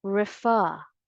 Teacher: the stress is still on the second syllable and you say refer again the correct pronunciation of this word is refer or refa